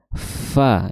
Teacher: Kalau kita lihat ya, makhraj huruf fa yaitu ujung gigi seri atas bertemu dengan bibir bawah bagian yang basah. Fa kemudian disertai dengan mengalirnya udara